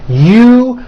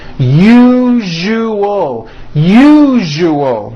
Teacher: That second syllable, ju, the one with the underline, needs to be voiced. Put your hand on your throat and feel for the vibration in the second syllable.